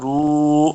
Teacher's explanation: واو مدہ ہے، اس کو دو حرکات لمبا کرنا ہے